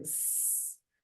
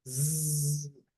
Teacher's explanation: only contributes by changing the voicing of consonant so for example when you say s the vocal cords are spread there's no vibration but when you say Z you can touch your larynx you feel vibration